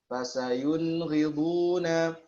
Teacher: Nah, di sini dia kan termasuk izhar adna ya. Ya, nun mati ketemu ghain dan kha termasuk izhar adna atau dani